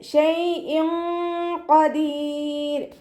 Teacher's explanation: തെൻവീനിലുള്ള നൂനിൻ്റെ സൗണ്ടിനെ മറച്ചു വെച്ചിട്ട് മണിച്ചോതി കൊടുക്കുക. നൂനിൻ്റെ സൗണ്ടിനെ വ്യക്തമായിട്ട് കേൾപ്പിക്കരുത്. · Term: ഇഖ്ഫാ